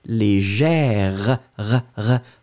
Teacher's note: Féminin, on le prononce différemment parce que vous le prononcez légère, r. Vous entendez le r, d'accord. Léger.